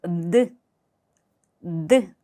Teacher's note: 알파벳의 명칭은 내지만 발음을 할 때는 디귿을 생각하시면 됩니다. 드 한글 디귿과 달리 공기가 전혀 없어요. 거의 100% 소리로만 이루어졌다라고 생각하시면 돼요.